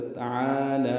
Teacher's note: تعالی میں غلطی یہ ہوتی ہے لوگ اکثر تعالی پڑھتے ہیں، تعالی یہ غلط ہے، تعالی عین اور لام دونوں کو برابر لمبا کرنا ہے، دو دو حرکات، عین کو وسط حلق سے ادا کرنا ہے